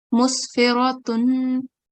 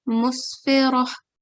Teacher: Instead of the ta sound, we make the ha sound.